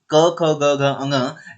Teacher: क वर्ग का उच्चारण स्थान होता है कंठ। जब हम इन्हें बोलते हैं तो कंठ से बोला जाता है।